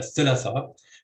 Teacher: So in 16, for example, the word in A is pronounced as a thulatha with stress on the second syllable